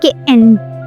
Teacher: as if you are about to pronounce a T, but suddenly you stop there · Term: Glottal T